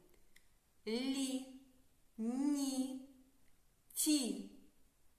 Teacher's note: Приголосні у цих складах м'які або пом'якшені.